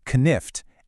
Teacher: Back in Old English, it was spelled knift, and you would have heard both that k at the beginning, knift, and that throaty H sound in the middle